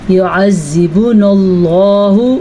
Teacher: اللہ کا نام پور پڑھنا ہے کیونکہ اللہ کے نام سے پہلے زبر ہے